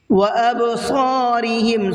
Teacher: صاد کو منہ بھر کے پڑھنا ہے، اور را کو باریک پڑھنا ہے، اس لیے کہ را کے نیچے زیر ہے